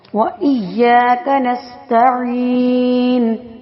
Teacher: سین سٹی والا حروف یعنی حروف صفیریہ میں سے تو سٹی کی آواز پیدا ہونی چاہیے